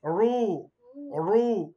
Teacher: রায় যদি পেশ হয় তবে রকে মোটা করে পড়তে হয়